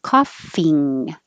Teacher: coughing the back of your tongue comes very high and touches the back of the top of your mouth